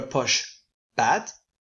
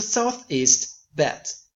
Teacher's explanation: Her vowels have, for instance, slightly flattened, going from a posh bad to a Southeast bad